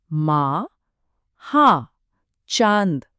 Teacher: ये एक ज्यादा नासिक ध्वनि है जो सीधे स्वर से आती है। यही अनुनासिक की खासियत है।